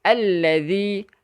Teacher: Hujung lidah di antara gigi gunting kita, keluarkan sikit daripada gigi gunting tu. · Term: huruf zal